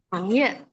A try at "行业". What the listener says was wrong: Ye, dia nggak ada ye, ye, ye, bunyinya ye,